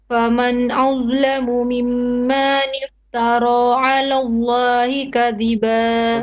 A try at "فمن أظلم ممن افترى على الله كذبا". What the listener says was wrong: Okay, few mistakes here. First, mimmanif, okay, not manif. That's one. Two, your meme before riba, you seem not to do the rules.